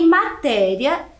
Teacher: matéria também é uma paroxítona, porque ela tem a penúltima sílaba tônica, mais forte